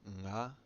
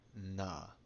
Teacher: Eng can either be a voiced velar nasal, nga, or a voiced alveolar nasal